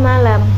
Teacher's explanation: dihasilkan dengan cara menempelkan daun lidah pada gusi dan mengeluarkan udara melewati lidah bagian samping sementara itu pita suara dalam keadaan bergetar contohnya pada kata malam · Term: konsonan lateral alveolar